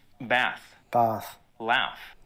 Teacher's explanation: other words that i would pronounce with an a sound are often pronounced differently with a long ah in australian english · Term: broad a